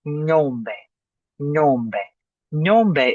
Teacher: You almost swallow the G. Almost. It's just in the back on the roof of your mouth.